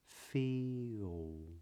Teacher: instead of pronouncing the L what might be true is that you are rounding your lips instead so instead of feel you might be saying feel all and